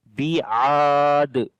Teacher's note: Ba we read in light sound. Ain we long because there is alif madda.